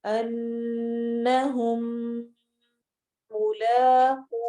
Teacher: ان نون پہ غنہ کرنا ہے ہم ملاقو میں میم پر بھی غنہ کرنا ہے